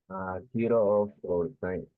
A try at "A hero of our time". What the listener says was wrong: Even though also you are making pauses. A hero of our time without stopping. You don't say a hero of our time. No, a hero of our time.